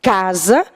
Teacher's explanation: a palavra casa tem como sílaba mais marcada cá então a palavra casa é uma paroxítona não é acentuada Por